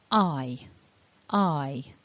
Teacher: the mouth is hanging open a little it's quite relaxed but towards the end with the e you can see the mouth is more spread the corners of the mouth are pulled towards your ears the teeth are closer together · when i make the eye sound at the beginning the mouth is hanging open a little it's quite relaxed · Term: double vowels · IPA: /aɪ/